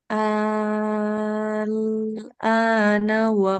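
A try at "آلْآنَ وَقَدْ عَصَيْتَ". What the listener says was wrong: Kurang, kurang. Kurang panjang. Baru 3 ketukan. 4. Al, gitu.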